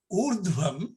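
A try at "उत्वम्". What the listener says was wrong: No, not urdhvam. Utvam. Utvam. Utvam.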